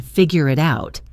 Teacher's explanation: notice the perfect example of linking in figure it out, which sounds like figure-a-toot